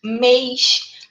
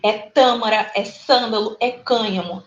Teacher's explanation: toda vez que a gente colocar um circunflexo, um chapéuzinho na nossa letrinha, a gente fecha ali o som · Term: mais fechadinho